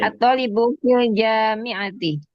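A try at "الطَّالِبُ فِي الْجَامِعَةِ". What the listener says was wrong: Ya, tolibnya dipanjangkan pengucapannya. At-thalib.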